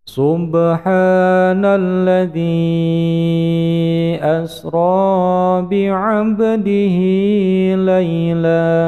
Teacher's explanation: Ini asalnya mad tabii, kasroh bertemu dengan ya sukun, tapi dikarenakan di depannya ada huruf alif yang tidak satu kalimat dengan alladzi, tapi alifnya ikut dengan asra, maka disebut dengan mad jaiz munfasil, panjangnya 5 ketukan